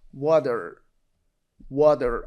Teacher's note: water, но и т сама озвучается до д